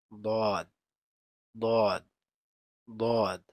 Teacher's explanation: দদ, দদ, দদ উচ্চারিত হয় জিহ্বার গুড়ার কিনারা উপরের মাড়ির দাঁতের গোড়ার সঙ্গে লাগিয়ে দদ উচ্চারিত হয়।